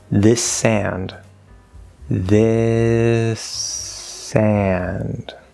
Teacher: obviously we get a slightly longer s so that does connect